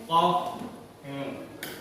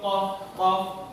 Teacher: Huruf qaf terletak di pangkal lidah. Qaf. Ini ya, pangkal lidah serta menepati langit-langit mulut atas.